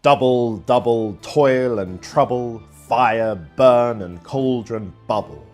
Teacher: Another kind of foot is the 2-syllable long trochee, a stressed syllable followed by an unstressed one. The trochees in these lines from Shakespeare's Macbeth lend an ominous and spooky tone to the witch's chant.